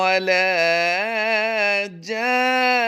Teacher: نون مشدد ہے، تو اس پر ہم وقف بھی کرتے ہوئے غنہ کر دیں گے